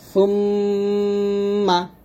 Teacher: যাই হোক, এখানে আমরা গুণনাটা আদায় করবো হচ্ছে জিহ্বার আগাটা উপরে তালুর সঙ্গে লাগিয়ে ইন্না, আর এখানে আমরা গুণনা আদায় করব 2 ঠোঁট মিল করে